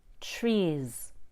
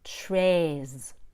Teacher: these are both tense vowels but the long a requires a bigger and more open mouth